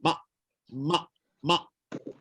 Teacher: Peti suara tertutup. Jadi udara keluar tak boleh masuk, udara dalam pun tak boleh keluar. Huruf macam hamzah. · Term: Huruf hamzah mati